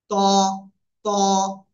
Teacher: জিহ্বার আগা, সামনের উপরের দুই দাঁতের গোড়ার সাথে লাগিয়ে মোটা আওয়াজে উচ্চারণ করব।